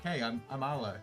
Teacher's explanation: You don't say your R's that much. There's no emphasis on an R.